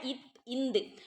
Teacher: ஆகிய இரு மெய்களும் மேல்வாய் பல்லின் அடியை நாக்கின் நுனி பொருந்துவதால் பிறக்கின்றன